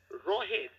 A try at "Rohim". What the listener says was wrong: Yeah, Rohim, I said, not Rohit, Rohim, M at the end.